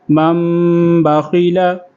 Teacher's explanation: اقلاب، نون ساکن یا تنوین کے بعد یہ یاد رکھنا ہے بچوں، نون ساکن یا تنوین کے بعد با آئے تو نون ساکن یا تنوین کو میم سے بدل کر غننے کے ساتھ پڑھیں گے